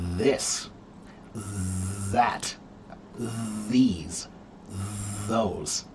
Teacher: those words have the voiced th sound